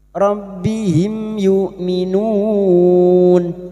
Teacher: Mim sukun bertemu ya. Idhar syafawi. Mim sukun dibaca jelas.